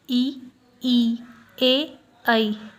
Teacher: अग्र स्वर में जीभ के आगे के भाग का यूज़ होता है उच्चारण में, जैसे ई, ए, ऐ।